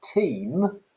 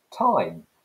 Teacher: a long vowel has become a diphthong which means two allied sounds together